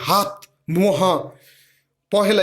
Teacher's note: হ বর্ণের দ্যোতিত ধ্বনিটি কণ্ঠনালীতে উৎপন্ন মূল উষ্ণ ধ্বনি, উষ্ণ ঘোষ ধ্বনি। এই উষ্ণ ধ্বনিটির উচ্চারণের সময় উন্মুক্ত কণ্ঠের মধ্যে দিয়ে বাতাস জোরে নির্গত হয়